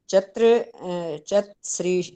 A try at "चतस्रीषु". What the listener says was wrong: चतस्रीषु, त को पूरा टाइम दो, चतस्रीषु।